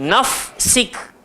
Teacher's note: Okey, pada perkataan nafsik, ramai orang dia tak bagi huruf fa punya hak sungguh-sungguh. Menyebabkan sin tu masuk dekat dalam fa.